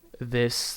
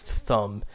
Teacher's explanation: the difference here would be like in this it would be voiced and in thumb it would be voiceless